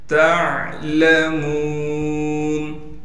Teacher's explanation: ता को आइन से मिलाना है, आइन को साफ करके गले से निकालेंगे। लाम को बगैर खींचे पढ़ेंगे।